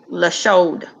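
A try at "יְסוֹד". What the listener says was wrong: Yasod, yasod, yasod. Yeah, it's not the SH. Yeah, yasod, yasod.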